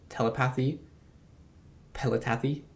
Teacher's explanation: what you did is swap two plosives in the sound so the T and the P sound you just swapped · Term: substitution error